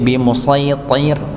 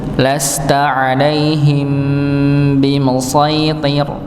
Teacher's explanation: Jadi ta-nya ya, ta-nya ini tebal, ra-nya yang tipis. Ya, kadang kalau kita tidak mencermati itu, kalau tidak ra-nya yang ikut tebal, ta-nya ikut tipis.